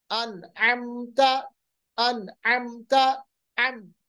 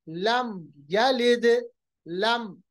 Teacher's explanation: मीम को पढ़ा और आगे बढ़ गए, बिल्कुल हमने देरी नहीं की, ना इख्फा किया ना गुन्ना किया। इसी तरह लम यलिद, लम, मीम को अदा किया, ना हमने इख्फा किया ना हमने गुन्ना किया, इसको कहते हैं इजहार।